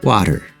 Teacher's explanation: the t is in between two vowels and not in a stressed syllable of the word so it gets a flap t